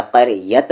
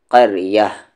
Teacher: جب یہاں پر وقف کریں گے تو یہ جو تا ہے، اس طریقے کا جو تا ہوتا ہے وہ ہا بن جاتا ہے